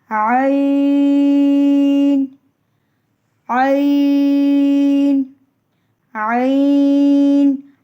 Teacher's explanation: حلق کے بیچ والے حصے سے عین کی ادائیگی ہوتی ہے